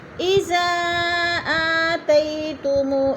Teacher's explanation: اذا پہ مد منفصل ہے، 4 الفی مد ہے، 4 حرکات کے برابر ہم نے اس کو لمبا کر کے پڑھنا ہے